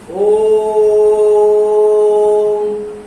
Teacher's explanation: इसके उच्चारण काल में दीर्घ से भी ज्यादा समय लगता है। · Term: प्लुत